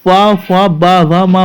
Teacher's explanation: जब हम फा फा बा वा मा बोलेंगे तो हमारे दोनों ओठों का क्या होगा? मिलन होगा, दोनों ओठ मिलेंगे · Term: ओष्ठ व्यंजन